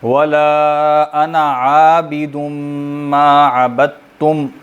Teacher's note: یہ جو انا ہے اس کے آخر میں الف کو نہیں پڑھا جاتا، لکھا جاتا ہے لیکن اس کو انا نہیں کہتے بلکہ انا یوں پڑھتے ہیں، ٹھیک ہے، اس کا آخری الف نہیں پڑھا جاتا، تو اس کو صرف آپ ایک زبر کے برابر لمبا کریں گے